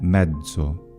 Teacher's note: The letter Z, though, can have another pronunciation, which is voiced, a voiced affricate.